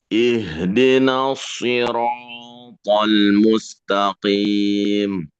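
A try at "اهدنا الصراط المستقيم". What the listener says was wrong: Ya, ihdina jangan jangan juga terlalu dipaksa ya. Haknya itu biasa saja. Coba diulang din bukan begitu ya. dibaca biasa saja.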